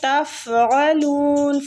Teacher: تَفْعَلُونَ، فا پہ قلقلہ نہیں ہونا چاہیے، عین حلق سے نکلے گا، وسط الحلق مطلب درمیان والا حلق کا حصہ۔